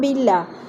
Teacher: باللہ کی اللہ پھر باریک پڑھی جائے گی